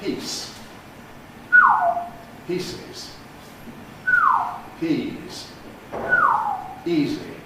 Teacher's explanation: We signal the consonant difference largely through the duration of the preceding vowel. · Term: pre-fortis clipping